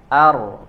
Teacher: Jadi kita bacanya samar jadi enggak terlalu jelas enggak juga terlalu atau enggak juga hilang getarannya jadi harus samar ya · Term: huruf ro